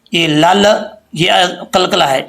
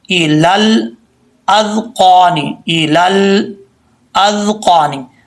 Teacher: तो पढ़ते हुए लाम में कलकला नहीं करना, लाम पे आवाज़ जम जाए। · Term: लाम साकिन